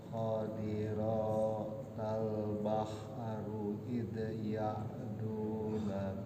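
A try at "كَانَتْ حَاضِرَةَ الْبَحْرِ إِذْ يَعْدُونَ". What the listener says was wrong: Awas, sekali lagi di situ di bahar itu ada waqaf mim kecil ya. Mim kecil harus berhenti, itu wajib berhenti. Ya, harus berhenti. Mim kecil.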